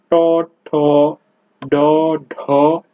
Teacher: মূর্ধায় স্পর্শ করে উচ্চারিত হয় বলে এদেরকে মূর্ধন্য ধ্বনিও বলা হয়ে থাকে